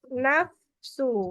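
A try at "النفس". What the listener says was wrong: enggak tebal cuma masuk kurang tadi bacanya tebal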